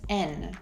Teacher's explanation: and becomes an or even just n